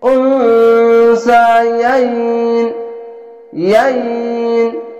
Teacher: শেষ অক্ষর সাকিন দিয়ে ইয়াই আর নুনকে ধরে ইয়াইন এভাবে থেমে যাবেন